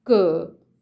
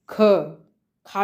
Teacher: खा में ज़्यादा वायु का वेग हो रहा है, इसलिए इसे महाप्राण कहा गया है